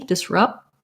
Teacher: And disrupts, we don't really say a clear P there, not rupts, because we would have to make extra sound. So I kind of stop that P, disrupt. I make it by closing my lips, and then I release it into the T